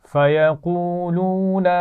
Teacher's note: فَيَقُولُون اس میں دو دفعہ واو مدہ ہے تو ایک جیسا کھینچ کر پڑھنا ہے